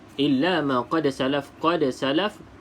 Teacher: da salah satu huruf qalqalah, maka dilantunkan huruf da tersebut